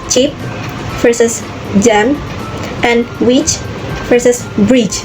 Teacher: J is voiceless while j is voiced. These are both alveolar affricates combining a stop and a fricative.